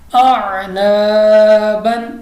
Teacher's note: الف سے پہلے زبر آ گئی، تو اس لیے ہم نے اس کو کھینچا ہے، الف مدہ ہے